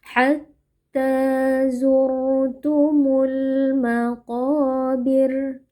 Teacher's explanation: dibaca dengan mengangkat pangkal lidah karena qof merupakan huruf isti atau huruf tebal ya.